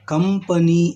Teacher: ಅದು ಹೇಗೆ ಎನ್ನುವುದನ್ನು ನೋಡುವುದಾದರೆ, ಉದಾಹರಣೆಗಾಗಿ ಕಂಪನಿ ಎಂದು ಈ ಶಬ್ದವನ್ನು ಉಚ್ಚರಿಸುವಾಗ ಅಥವಾ ಈ ಪದವನ್ನು ನಾವು ಉಚ್ಚರಿಸುವಾಗ ನಮ್ಮ ತುಟಿಗಳು ಒಂದಕ್ಕೊಂದು ಸೇರಿ ಮೂಗಿನ ಸಹಾಯದಿಂದ ಕಂಪನಿ ಎಂದು ನಾವು ಉಚ್ಚಾರ ಮಾಡುತ್ತೇವೆ